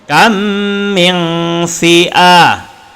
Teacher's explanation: Ketika kita baca kam, maka kena baca dengung. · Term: idgham mithlain